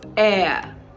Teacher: It begins with the letter H, but it doesn't begin with the sound.